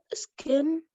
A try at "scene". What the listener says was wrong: Scene, the C is silent here.